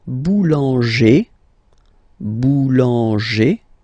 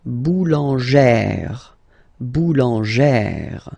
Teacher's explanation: you pronounce it like E, really open E sound